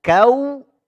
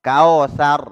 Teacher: kalau waw sukun sebelumnya fathah, ini larinya ke bunyi dhammah. U. Karena waw sukun induknya dhammah. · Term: layyin